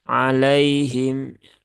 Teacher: Ada ya sukun yang didahului harakat fathah maka Lin itu lembut ya jadi lembutkan saja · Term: huruf Lin